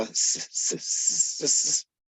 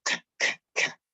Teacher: Front of the mouth for s, and back of the throat for k